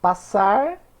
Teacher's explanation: Passar, a sílaba tônica é o sar